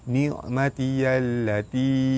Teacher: Alif lam bertemu dengan lam, hukum dia alif lam syamsiah, cara baca dia terus masuk ke lam yang kedua